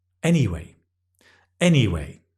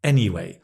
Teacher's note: Normally with a falling intonation. Anyway. And that tells everybody you're changing topic.